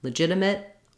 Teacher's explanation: for our final T depending on what's next we'll use an unreleased T